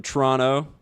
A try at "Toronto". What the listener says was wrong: If you want to sound like you're from there, you don't pronounce any of the T's except for the first one. Turrunno. Toronto.